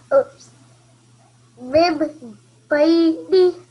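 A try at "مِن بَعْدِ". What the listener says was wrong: Not nasal sound, but just pausing a little bit. 2 seconds, remember?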